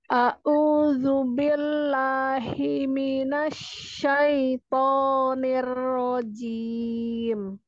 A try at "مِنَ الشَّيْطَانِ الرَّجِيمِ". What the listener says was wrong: Himinas tadi hi-nya agak naik. Himinas hi